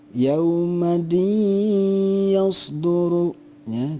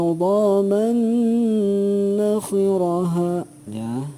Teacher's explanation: dengan cara ditahan dulu dua harokat disertai dengung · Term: idgham bighunnah